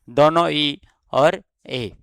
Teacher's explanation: इन स्वरों में ध्वनियों के उच्चारण में जिभ्या मुंह में आगे की ओर जाती है। मतलब यह जिभ्या के आगे वाले हिस्से से बोले जाते हैं। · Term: अग्र स्वर